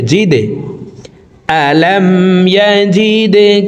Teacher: তো এই তিনটি হরফের ভিতরে একটি হরফ দাল আসছে। এই কারণে এই দাল হরফকে নিচের দিকে ধাবিত করে ধাক্কা দিয়ে উচ্চারণ করব। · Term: কলকলাহ